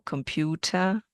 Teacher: the E R at the end that doesn't sound at all